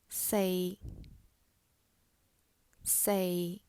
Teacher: it's a steady pitch around the middle tone of a person's voice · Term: mid-level tone